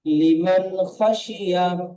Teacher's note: নুন সাকিনের পরে হরফে হালকির 6টি হরফের মধ্য থেকে খ এসেছে, তাই নুন সাকিনের আওয়াজকে বিনা গুণনায় জাহির করে তাড়াতাড়ি পড়তে হয়। খয়ের উপরে জাবার আছে, জাবারটি হলো হারাকাত, হারাকাতকে টান না দিয়ে তাড়াতাড়ি পড়তে হয়।